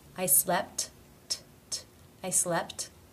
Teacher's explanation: the first tee finishes a word but it is part of a consonant cluster therefore it is pronounced as the actual t